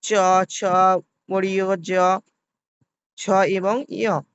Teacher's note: ছ বর্গের উচ্চারণে জিহ্বার মধ্যভাগ তালুতে স্পর্শ করে